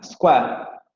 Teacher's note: Tenemos que en la variante de estándar, vamos a decirlo así, la palabra es esta vocal con la vocal semiabierta anterior no labializada, square. Pero en Lancashire vamos a tener que square se va a pronunciar con la vocal con que se pronuncia nose, nose, square, square, square.